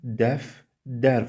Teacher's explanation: Yəni, D variantında dəftər sözü orfoqrafik məqamdır və düzgün tələffüz forması dəf-dər formasında olacaq. Yəni, iki kar samiti yanaşı gələndə adətən ikinci kar samit özünün cingiltili qarşılığı ilə əvəz olunur ki, burada da t-də əvəzlənməsi baş verdi.